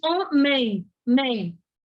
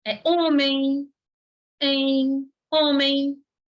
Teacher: Então, é como se tivesse no som um i depois do e. Então, tem um ditongo. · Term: ditongo fonético